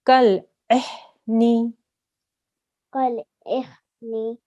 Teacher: make sure the ha sound isn't coming from the middle. It's not the middle throat sound. It's the bottom of the throat sound.